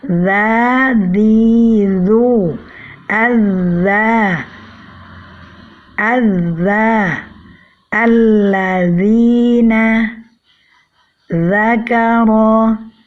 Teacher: hanya ujung lidah yang bertemu dengan ujung gigi seri atas tanpa disertai dengan naiknya pangkal lidah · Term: huruf zal